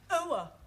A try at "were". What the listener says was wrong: Try again, but this time, don't say oa, just were.